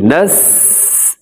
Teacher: سین میں سیٹی ہونی چاہیے، نس ایسی سیٹی کی آواز ہو۔